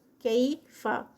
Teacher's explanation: یا سے پہلے جو ہے وہ زبر آ گئی ہے، تو یہ یائے لین ہے